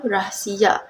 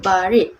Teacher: Getaran gusi bersuara R ditemui di awal kata dan di tengah kata.